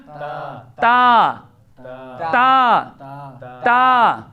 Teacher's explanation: تا کا مخرج زبان کی نوک اور ثنایا علیا کی جڑ